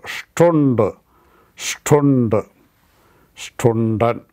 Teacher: ST and SP has a sh sound